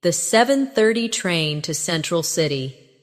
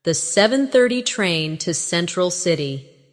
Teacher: Do you notice how to almost disappears? It blends into the next word sounding like to central city.